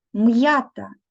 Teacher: буква я позначає два звуки чуємо звук й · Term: Роздільна вимова